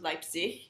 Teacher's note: The G at the end of words is a little bit softer. It's a little bit more in your throat than we would necessarily say it